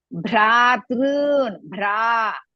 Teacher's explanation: ಭ್ರಾ ಇಸ್ ಮಹಾಪ್ರಾಣ as well as ದೀರ್ಘ · Bhra is Mahaprana as well as Dirgha.